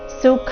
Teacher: ಸುಖ ಇಲ್ಲಿ ಖ ಮಹಾಪ್ರಾಣ ರಸ್ವ